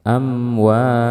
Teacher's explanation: karena mim ini memiliki sifat gunah maka otomatis akan ada gunahnya tapi gunahnya tidak boleh dipanjangkan jadi seperti ini saja amwa gitu ya amwa seperti itu kemudian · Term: izhar syafawi